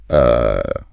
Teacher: formal words are full of this schwa, which is just that neutral mumbled uh sound. >> The schwah is so interesting because it's phonetically neutral.